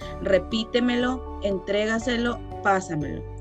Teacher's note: llevan el acento en la sílaba anterior a la antepenúltima, la cuarta, empezando por detrás